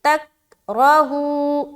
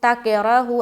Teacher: اس کے بعد تک راہو، تک راہو، تا کا زبر تک، را زبر را کو موٹا، ہا واپش ہو، واو مدہ، تک راہو تک راہو۔ تا کاف سے جیسے ملے گا آواز اٹک جائے گی، بند ہو جائے گی